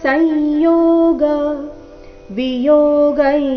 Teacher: ಅನುಸ್ವರದ ಉಚ್ಚಾರಣೆ ನಾಸಿಕ ಯ ರೀತಿ